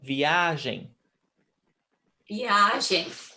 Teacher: Yes, the stressed syllable is A, because here we've got 3 syllables, V, A, gen. The strongest one is the middle one, viagem.